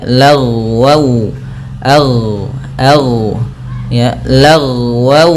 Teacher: lafal ghain ketika dia sukun jangan sampai memantul, karena huruf ghain tidak ada sifat qalqalahnya